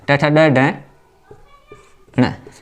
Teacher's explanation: मूर्धन्य शब्द है क्योंकि मूर्धा से उत्पन्न हो रहे हैं।